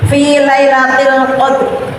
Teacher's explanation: huruf yang terakhir dibaca mati tetapi tipis saja